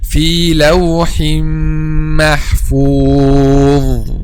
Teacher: a dha is a heavy, the back of the tongue is raised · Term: letter dha